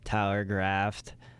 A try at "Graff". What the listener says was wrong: It's Graff. There's no T.